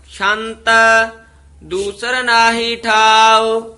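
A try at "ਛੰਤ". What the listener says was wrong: शांत नहीं बोलना छंत छच्छा बोलना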